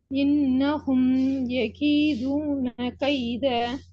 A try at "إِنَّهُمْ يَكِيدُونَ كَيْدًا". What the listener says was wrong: கைதா. அந்த நிப்பாட்டுற முறை பிழை, நிப்பாட்டுற ஒழுங்கு பிழை. كيدا إنهم يكيدون كيدا